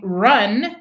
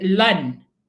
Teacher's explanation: Instead of R, he said the L sound. So instead of saying run, he would say lun.